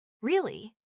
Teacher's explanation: Flat tone. Sounds like you're bored.